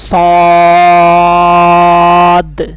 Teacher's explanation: اس کے علاوہ یہاں آپ نے ایک بات کو ذہن میں رکھنا ہے، لوگ اس کو اکثر سواد پڑھتے ہیں، اس کے ساتھ واو لگاتے ہیں، جبکہ یہاں پر آپ اس کے ساتھ لکھا ہوا دیکھیں تو یہاں پر واو واضح طور پر ہے کہ واو یہاں پر نظر نہیں آ رہی۔ اس کے علاوہ یہ حروف مستعلیہ بھی ہے، اس کو آپ نے پوری یعنی موٹا پڑھنا ہے۔ کس طرح؟ صاد، اس کی مقدار بھی 5 الف کے برابر ہوگی۔